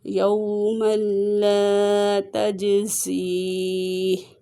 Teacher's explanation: لام کو ایک سیکنڈ لمبا کر کے پڑھیں گے کیونکہ الف مدہ ہے، اور جیم میں قلقلہ کریں گے، جیم حروف قلقلہ میں سے ہے۔